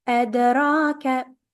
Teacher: Ra is followed by a small alif. Make it a bit longer, not too long. That one is 4 counts.